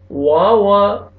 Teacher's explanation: واو کو ہونٹ گول کریں گے، لپس کو راؤنڈ میں لے کے جائیں گے تو اچھی طرح واو ادا ہوئے گا۔